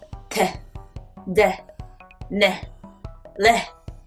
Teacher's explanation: 이 소리들은 모두 특징이 혀가 윗니빨 뒤에 딱 붙었다가 나는 소리란 거예요.